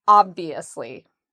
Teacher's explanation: So we put the stress on the first part, ob, and then we have the V, ob-V, and notice how my lips go under my teeth, ob-V, asli, obviously, obviously.